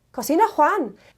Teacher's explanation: form a question the first way of doing it is by switching the verb and the subject and adding that little bit of rising intonation at the end